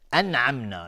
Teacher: نون ساکن بعدش عین اظهار حلقی